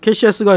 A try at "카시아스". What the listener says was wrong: 발음이 캐시아스 쪽으로 가는데요. 여기 원 대본에도 나왔는데 왜 캐시아스야? 너무 캐시를 좋아하는 거 아닙니까?